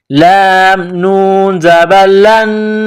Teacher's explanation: نون ساکن کے بعد نون ہے جو مشدد ہے تو یہاں آواز ناک میں چھپائیں گے